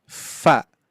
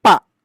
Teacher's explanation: Dari perut bibir bawah menempel ke gigi seri atas gitu ya. Maka bunyinya fa ya, jangan sampai bunyinya pa ya. Kalau pa nanti makhrajnya di huruf ba atau mim ya, seperti itu.